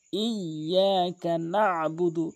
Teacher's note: ইয়াতে তাসদীদ রয়েছে, ডবল উচ্চারণ হবে